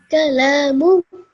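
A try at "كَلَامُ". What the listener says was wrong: Just make sure that you stretch this one just a bit longer, just for 2 seconds, so that you read it nice and beautifully, okay?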